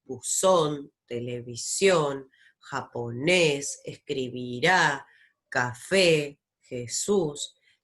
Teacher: las agudas, bien, que son aquellas que suenan fuerte en la última posición